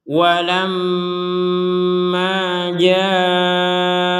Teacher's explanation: Walamma di sini ada mim bertasydid, maka kita bacanya dengan dengung. Dengung itu artinya jangan sampai dibacanya nggak ada dengung.